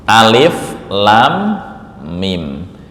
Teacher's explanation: Lam ini panjangnya enam harakat. · Mim bertemu dengan mim ini namanya idgham. Mimi ditahan 2 sampai 3 ketukan atau harakat.